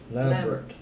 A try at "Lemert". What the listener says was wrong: Lambert, but there's no B in it.